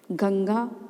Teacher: जो ऊपर अनुस्वार की बिंदी हम लगाते हैं जैसे गंगा तो गंगा शब्द में जो ऊपर जो बिंदी लगी है उसको हम नासिका से बोलते हैं